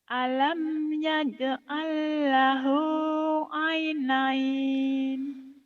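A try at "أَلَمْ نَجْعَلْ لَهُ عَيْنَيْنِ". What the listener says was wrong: Alam yaj'al. Alam mana? Alam naj'al bukan yaj'al. Alam naj'al lahu ainain. Naj'al bukan yaj'al ya. Nunnya satu titik di atas.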